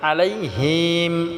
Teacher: আইনটাকে গলায় চাপ দিয়ে উচ্চারণ করতে হবে